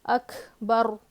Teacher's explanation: اکھ میں بھی محموسہ ہے کاف, تو ہلکی سی جو ہے نا ہوا باہر آئے گی